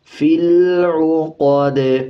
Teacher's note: قاف کو موٹا پڑھا جائے گا، اور جب وقف کریں گے تو دال پہ قلقلہ کریں گے، زیر کو سائلنٹ کر دیں گے۔